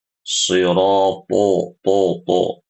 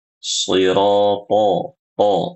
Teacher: ketika membaca huruf to, dia tuh harus tebal dan mulutnya dibuka, jangan dimonyongkan, ya, apalagi dimonyongkan terlalu monyong.